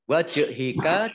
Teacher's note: Jim sukun bacaan Qalqalah juga memantul ya ditampakkan pantulannya